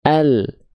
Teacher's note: Huruf lam dilafalkan dari samping lidah depan bagian kanan menyusur sampai ke ujung lidah, dan samping lidah depan kiri menyusur sampai ke ujung lidah.